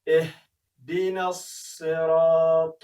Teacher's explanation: د ها توری یعنی کوچنی ها د ستوني په بیخ کې بیا ادا کوي